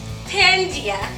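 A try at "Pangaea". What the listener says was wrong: Well, you put the wrong emphasis on the wrong syllable. It is Pangea.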